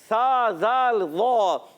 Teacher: سا زال وا، یہ حروف لثویہ میں سے ہیں. اور جی ہاں زبان کا سرا اور اوپر کے دانتوں کے کناروں سے، اندرونی کناروں سے یا بیرونی کناروں سے یہ حروف ادا ہوتے ہیں